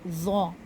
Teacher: हरूफ ज़ौ के लिए ज़बान की नोक सख्ती से लगती है, और साथ ही साथ ज़बान का बाकी का हिस्सा ऊपर तालू की तरफ चिपक भी जाता है।